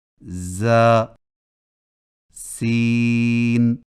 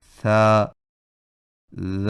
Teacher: بعض کو سیٹی جیسی آواز کے ساتھ پڑھا جاتا ہے، جیسے ز سین۔ اور بعض کو نرمی کے ساتھ بغیر سیٹی جیسی آواز کے پڑھا جاتا ہے